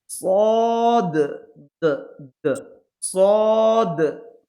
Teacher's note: দাল লাস্টে কলকলা হবে। মানে ঝটকা হবে, আওয়াজে ঝটকা হবে এভাবে।